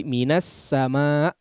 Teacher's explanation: Seperti minas sama misalnya, di situ kan ada alif lam ya, tapi alif lamnya tidak dibaca, masuk langsung kepada huruf sin dan sinnya biasanya bertasydid